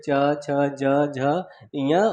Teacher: च वर्ग ये हमारे तालु से बोले जाते हैं